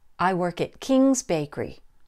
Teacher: Notice that King's is the most important word and the word that gets the stress. The answer to my question is King's Bakery, not any other bakery.